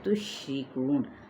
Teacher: را باریک پڑھا جائے گا، کو پہ واو مدہ اور نون ساکن کریں گے تو وقف اسکان ہوگا۔